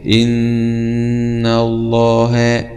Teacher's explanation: نلاحظ هنا أن هذا النون مشدد، فالنون يكون فيها غنة بمقدار زمني بمقدار حركتين. يبقى إن الله، يعني لا تقرأ وتقول إن الله، ولكن الصحيح إن الله، هكذا.